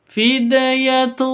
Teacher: tanwin bertemu dengan tho cara bacanya samar didengungkan siap-siap ke huruf thnya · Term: huruf ikhfa Hakiki